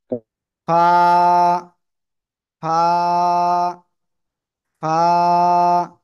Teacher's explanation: দুই ঠোঁটের পেট উপরের দুই দাঁতের আগার সাথে লাগাবো, লাগিয়ে হালকা বাতাস বের করব, বের করে মাত্র এক লিফ টেনে পড়বো।